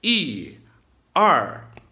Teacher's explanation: They both drop, but the second one drops a little lower, and it starts a little lower. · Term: 2 fourth tones